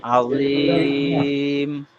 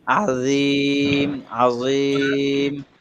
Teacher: আজিম, এখানে জটাকে আরেকটু নরম করলে ভালো হবে।